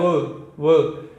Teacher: एक तो हो रहा है किसका, दांतों का, और साथ में ओष्ठ का, यानी कि दंतोष्ठ। जब हम बोल रहे हैं व को, तो दांतों का तो प्रयोग हो ही रहा है, और साथ साथ में हो रहा है होंठों का